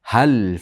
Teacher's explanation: Hal ha yengil ha lam qalqala bo'lmasin.